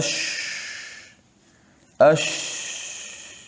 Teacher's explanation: یہ صفت صرف شین کی ہے، مطلب اس کا یہ ہے کہ اس کے ادا میں آواز منہ کے اندر پھیل جاتی ہے. اش اش، تو یہ آواز ایسے منہ میں پھیل جاتی ہے، اس کو تفشی کہتے ہیں.